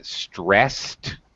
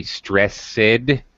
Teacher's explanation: t sound we don't say stress sid uh we don't pronounce the ed is pronounced as a t